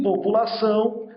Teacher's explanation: nós temos um ditongo nasal, em que o A funcionará como vogal e esse U contínuo, ele recebe aí um decréscimo de tonalidade na pronúncia, por isso também um ditongo decrescente.